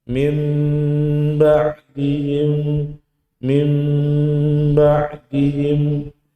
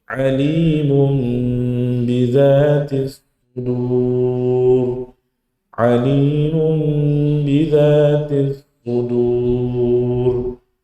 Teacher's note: Ya, jadi nunnya hilang, langsung masuk ke huruf mim. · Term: iklab